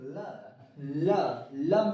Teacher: जिभिया ऊपर जाकर लपटा जाती है